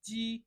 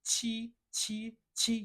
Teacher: When I say g, when I say chi chi chi, you think it's the same, but it's not the same. G doesn't have airflow coming out and chi has airflow.